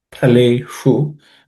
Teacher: The pa is also aspirated. It's the second letter in the pa varga. Phaleshu. The sh is again cerebral sh.